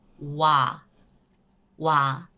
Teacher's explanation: O plus A. So start from O and with A. O-A. Wa. Wa.